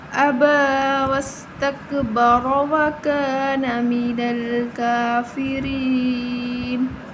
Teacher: أَبَى وَاسْتَكْبَرَ وَكَانَ مِنَ الْكَافِرِينَ، کھڑی زبر 1 الف کے برابر لمبا کریں گے، را زبر کی وجہ سے پر پڑھی جائے گی۔ یہاں یا مدہ ہے، 1 الف کے برابر لمبا کریں گے، کھڑی زبر کو بھی ہم 1 الف کے برابر لمبا کریں گے، نون وقف کی صورت میں ساکن ہو جائے گی، ٹھیک ہے۔